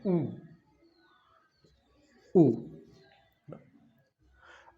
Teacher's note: ऊ में आपके दोनों होठ गोल हो रहे हैं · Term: व्रत